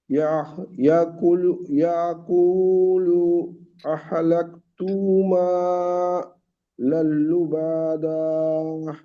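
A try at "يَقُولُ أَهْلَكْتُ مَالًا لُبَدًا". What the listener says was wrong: লুবা টান হচ্ছে, হারাকাত গুলো টান হয়ে যাচ্ছে, আহা হয়ে যাচ্ছে, হায়ের উপরে জাবার নেই, হামজা হা জাবার আহ, আহলাকতু মালাল লুবাদা।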